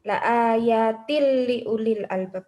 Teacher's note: Kemudian tilli uli yaitu idgham bila guna, yaitu apabila ketika nun sukun atau tanwin bertemu dengan salah satu huruf idgham bila guna yakni lam ro, maka dibaca dengan memasukkan dengan tanpa mendengung